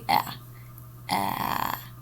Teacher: i do feel vibration so that means that the a sound is voiced